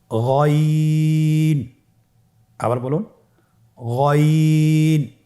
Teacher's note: গইন হরফটি উচ্চারিত হয় কণ্ঠনালীর শেষ ভাগ হতে।